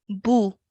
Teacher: the bur has a dhamma so only going to be pronounced for one count okay boo no longer than that and then the Dal is